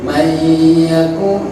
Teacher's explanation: lebur dan dengung ditahan terlebih dahulu. Itu masuk idgham diguna.